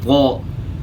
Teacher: जुबान ऊपर उठेगी। मोटा करने के लिए जुबान तालू की तरफ उठती है। तो यहां जो है जुबान का बीज खासकर ऊपर तालू की तरफ उठेगा।